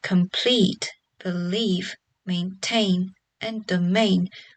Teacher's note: For both verbs and nouns, the stress tends to stay on the last syllable. So the words like complete, believe, maintain, and domain will all have stress on the last syllable.